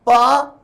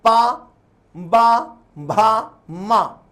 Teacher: आप होठ आपके भिड़ेंगे, मेरे बोलने के तरीकों को देखें, पा, बा, भा, मा, होठ चिपक रहे हैं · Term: ओष्ठ्य व्यंजन